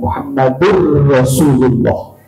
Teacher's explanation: Karena ada tanwin bertemu dengan ra. Muhammadur Rasulullah diidghamkan, namanya idgham bila gunnah. Diidghamkan Muhammadur Rasulullah, enggak begitu bacanya.